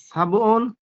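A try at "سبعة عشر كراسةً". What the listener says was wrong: 17টি, তাহলে সাবআ, সাবুন নয়, হ্যাঁ? সাবআ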